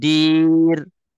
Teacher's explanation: bila ro kita nak sebut ra tipis masih lagi tersenyum